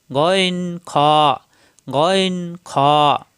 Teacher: practice করবেন হা মুখ খোলা থাকবে হা কণ্ঠনালীতে চাপ সৃষ্টি হবে তিন নাম্বার মাকরাজ কণ্ঠনালীর শেষ হইতে মোটা করে উচ্চারিত হয়